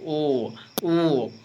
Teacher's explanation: कंठ से और ओठ से बीच बोलता है। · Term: कंठोष्ठे वर्ण